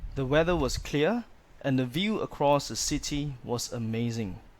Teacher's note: when the sentence is reaching a full stop there's a falling tone but where there are commas there's a rising tone